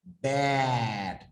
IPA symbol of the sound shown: æ